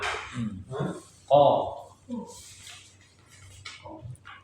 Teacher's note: Ko makhrajnya di pangkal lidah menempel pada langit-langit lunak. Ko. Sifat yang pertama jahar.